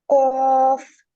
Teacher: कौफ को अदा करते वक्त जुबान की जड़ को कौवे के मुतसल तालु पर लगा कर मोटी आवाज में पढ़ें। हाँ, ये मुत्तसिल तालु पर, यानी जब कौफ को पढ़ेंगे तो जुबान की जड़ बिल्कुल कौवे को ही लगेगी।